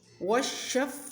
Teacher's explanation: شین کہتے ہوئے زبان کا اوپر والا حصہ تالو کے ساتھ لگے گا